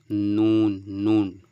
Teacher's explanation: জিহবার আগা তার বরাবর উপরের তালুতে